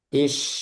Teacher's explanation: is ada suaranya terus sampai terakhir. Is tapi yang fathah as ah enggak ada suaranya yang ujung-ujungnya as ah cuma sebentar suaranya.